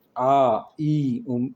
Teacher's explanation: ऐसे स्वर जिनका उच्चारण नाक और मुंह से होता है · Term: अनुनासिक स्वर